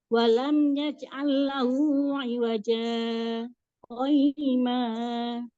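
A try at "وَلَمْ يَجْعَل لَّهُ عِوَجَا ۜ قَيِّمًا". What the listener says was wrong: gini, wajah qayyima. Itu jadi kayak nyambung, harus berhenti. Jadi memang harus berhenti, tidak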